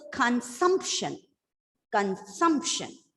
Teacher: the penultimate syllable is stressed